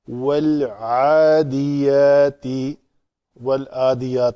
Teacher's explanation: عین کے لیے اس کا مخرج ہے وسط حلق عین ہا، تو یہاں سے اس کو نکالیں گے والعادیات، والعادیات